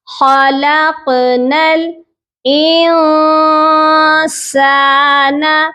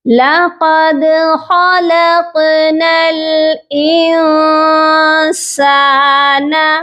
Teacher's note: نون ساکن پر آپ نے سافٹ غنہ کرنا ہے، یعنی کہ چھپا ہوا غنہ کرنا ہے، آواز آپ کی ناک میں چھپا کر آپ نے یہاں پر غنہ کرنا ہے۔ انسان، ان کر کے نون کی آواز پراپرلی آپ نے جو ہے ادا نہیں کرنی۔